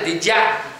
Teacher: esa D seguida de una I, del you, es muy fácil que se convierta en did ya, y ahí ya no hay ni una D ni una I, hay una palatal, es una Y, ¿vale?